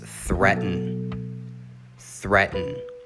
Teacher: the a does not make a sound in this word and the emphasis is on the first syllable